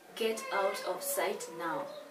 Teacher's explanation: this one is a command and all the commands will take a falling intonation